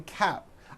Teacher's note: For cap, you may be saying cap. I am wearing a cap, and you don't hear the P sound.